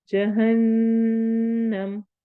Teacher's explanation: नून पर हम गुन्ना करेंगे